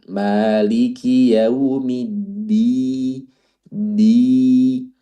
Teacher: bukan pakai d, tapi huruf dal itu makhrajnya lebih ke depan